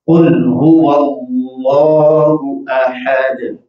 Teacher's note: دال پر جب آپ وقف کریں گے تو اس میں قلقلہ ادا کیا جائے گا